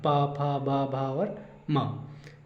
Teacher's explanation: और पावर्ग, पावर्ग ओष्ठ है इसका उच्चारण स्थान, क्योंकि आप जब ये पावर्ग के पांचों अक्षरों का उच्चारण करेंगे या इनको बोलेंगे तो बोलते समय जो ओठों का ही प्रयोग सर्वाधिक किया जाता है। यदि आपका ऊपर का ओठ हटा दिया जाए तो आपको ये वर्ड बोलने में काफ़ी समस्या आएगी और इनका सही उच्चारण नहीं कर सकते हैं।